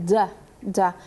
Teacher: se pone la lengua contra los alvéolos. Se toca, se apoya ahí y se pronuncia la da, da.